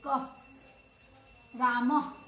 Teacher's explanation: इसके उच्चारण करते समय अह में हमारे मुंह से ह की ध्वनि निकलती है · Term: विसर्ग